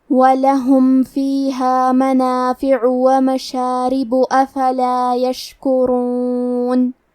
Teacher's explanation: کلمت یشکرون میں شین ساکن ہے لہذا ہم حرف شین کو ظاہر کریں گے۔ را پہ پیش ہے تو ہمیں حرف را کو موٹی آواز میں پڑھنا ہے